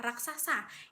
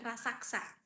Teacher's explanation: metatesis, yaitu pertukaran posisi bunyi dalam kata. Contohnya kata raksasa yang dalam bahasa lisan seringki diucapkan dengan rasaksa.